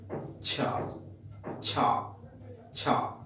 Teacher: সম্পূর্ণরূপে nasal passage এবং oral passage বন্ধ থাকছে না, না থেকে কি হচ্ছে? আস্তে আস্তে রিলিজ হচ্ছে। যথেষ্ট টাইমের জন্য বন্ধ থাকছে না, আস্তে আস্তে রিলিজ হচ্ছে। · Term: অ্যাফ্রিকেট কনসোনেন্ট